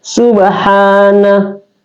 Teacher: Jadi pengecualian dua huruf itu masuk di al-khaisun adalah mim dan nun ya. Karena nun itu otomatis di al-khaisun keluar di hidung.